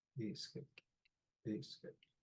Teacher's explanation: This A here, we call it a loaded K because it's underlined and has a glottal stop. So we push the back of our tongue up towards our tonsils, and that creates an airflow blockage. And then we kick the K from back there.